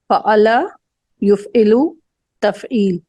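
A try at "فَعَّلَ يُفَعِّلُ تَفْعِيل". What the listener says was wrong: फ़अल नहीं, गलत। फिर पढ़ने में, मुजारे पढ़ने में गलती।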